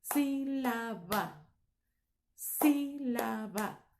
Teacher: Tenemos el sonido más fuerte en la primera sílaba de sílaba, que es la separación sí, ¿ok?